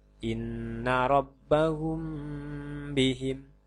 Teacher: pada fase ini terdapat mim sukun yang dihadapkan bak maka mim sukun harus dibaca samar-samar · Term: Ikhfa Syafawi